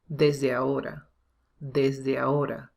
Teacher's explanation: So we have to say ahora. So this H is silent. It's not ajo, it's ao. You have to join the two vowels.